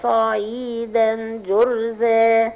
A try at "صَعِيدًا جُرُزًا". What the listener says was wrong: لا جرو ضم الراء.